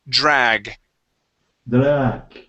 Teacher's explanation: Okay, and with that DR, okay, treat that D sort of like a J. We make a vibration, sort of like if you were to say job.